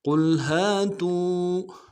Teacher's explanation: قاف کو موٹا ادا کرنا ہے، لام کے ساتھ ملائیں گے، لام ساکن غنہ نہیں ہوگا ، ہا کو نرم سے ادا کریں گے، ہا کے ساتھ